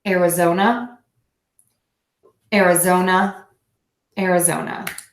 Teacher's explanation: so we have two schwa sounds here